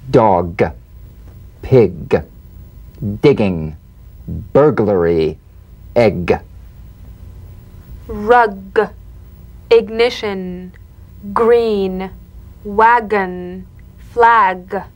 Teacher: the voiced tongue back plosive consonant G place the back of the tongue in gentle contact with the